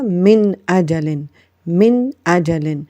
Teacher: نون ساکن کے بعد حمزہ ہے تو یہاں پر غنہ نہیں ہوگا، بلکہ ہم نے غنہ کے بغیر اس کو اظہار کے ساتھ پڑھا